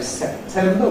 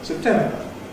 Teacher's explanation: We can say September with sep, or we can say September, weakening it to sip or sip. And that's typical of quite a large number of words in the vocabulary that you have a choice about whether you weaken them or not.